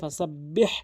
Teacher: এই হাটি অবশ্যই হলকের মাঝখান থেকে চাপ দিয়ে উচ্চারণ করতে হবে, ফাসাব্বিহ এভাবে চাপ দিয়ে।